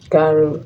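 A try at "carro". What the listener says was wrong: Now, if you say caro, it's only one R. Caro. Caro. The double R makes the sound stronger, like an H in English.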